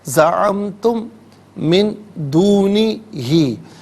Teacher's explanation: زعمتم میں میم ساکن ہے، اسے من کی میم کے ساتھ ملائیں گے